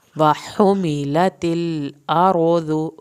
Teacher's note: ہا کو حلق سے پڑھنا ہے آرو را کو پر کرنا ہے وا پڑھنا ہے اس کو